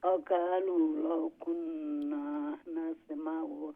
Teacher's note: কুন্না নুনটা একটু লং হবে, আলিফ আছে